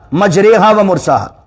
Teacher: ایمالا کا رول کیا ہوتا ہے کہ آپ کھڑی حرکات کو انکلائن کرتے ہیں، یعنی زبر اور زیر کے بیچ کی آواز نکالتے ہیں